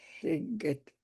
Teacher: You put your tongue behind your top teeth and let the air come out the sides.